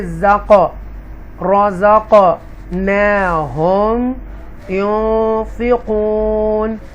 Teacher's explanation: हरूफ कलकला में से क़ाफ है, उसको हमने इको साउंड के साथ पढ़ेंगे।